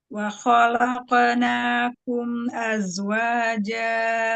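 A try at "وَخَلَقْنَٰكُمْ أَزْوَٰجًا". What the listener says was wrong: Karena qafnya huruf tebal. Jadi qalqalahnya tebal juga. Naknya jangan naik. Dan buru-buru qalqalahnya. Ya, mim sukun yang sukun idhar syafawi, nun yang sukun idhar halqi, itu jangan buru-buru ya, dinikmatin bainiyahnya. Nikmatin, jangan buru-buru.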